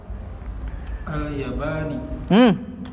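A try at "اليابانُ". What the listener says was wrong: Kenapa dibaca kasroh di sini? Sementara gak ada yang mengkasrohkan. Dibacanya yang benar apa? Al-Yabanu. Al-Yabanu. Kenapa gak ada yang mengkasrohkannya?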